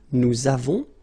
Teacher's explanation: so you can put this little liaison, link between the two